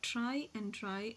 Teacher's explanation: Moving on, the next type of sounds, consonant sounds, are post-alveolar. In this, the tip of the tongue is the active articulator and the part just behind the teeth ridge is called the passive articulator.